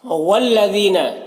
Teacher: والذین، یہاں پر لام مشدد حرف ہے تو لام مشدد حرف تو پیچھے والے متحرک حرف واو سے مل کر پڑھا جائے گا، الف کو نہیں پڑھیں گے، اس میں کوئی حرکت نہیں، اس کو نہیں پڑھنا۔